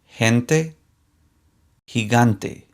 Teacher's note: the weak g sounds like the english h